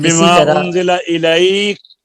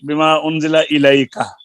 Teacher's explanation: مثلا کسی شخص کا سانس سورہ بقرہ کے شروع میں بما انزل الیک کے کاف پر ٹوٹ گیا تو اس وقت کاف کو ساکن کر دینا چاہیے، زبر کے ساتھ وقف نہ کریں